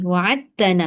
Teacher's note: Huruf dal memang qalqalah tapi sebab dia tak guna kerana bertemu dengan ta. Ta tu adalah huruf yang sama makhraj dengan dal. So dinamakan idgham mutajanisain.